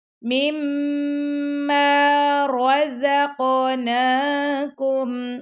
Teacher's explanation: را کو پر پڑھنا ہے، موٹا پڑھنا ہے، قاف پر کلکلا کرنا ہے آپ نے